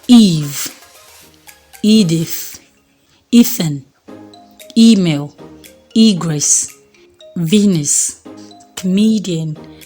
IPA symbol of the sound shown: i: